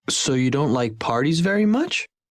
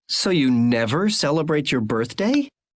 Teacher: the listener is checking and you hear the intonation go up